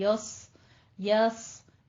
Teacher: पहले से या को मोटा नहीं करना, या को बारीक रखना है। य आगे सौद पुर हो जाएगा।